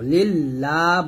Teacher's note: লামটা যে ডানে জের আসছে, তাই এটা আমরা পাতলা করে পড়বো, লিল্লাহ বলবো।